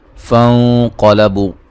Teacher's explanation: نون ساکن کا موٹا اخفا ہے، قاف کو موٹا ادا کریں گے، بو و مدہ ہے۔